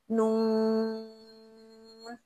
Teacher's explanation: फिर नून ज़बान की नोक से अदा होता है, दांतों की जड़ और नाक की आवाज़ से। नून, इसमें नाक से भी आवाज़ आनी चाहिए। और हमारे जो दांत हैं, नून, तो दांतों की जो जड़ है वहां पर भी हमारी ज़बान लग रही है, क्योंकि हम नून को ज्यादा खींच रहे हैं ना, तो ज़बान एक जगह बाकायदा तौर पर वहीं चिपक रही है।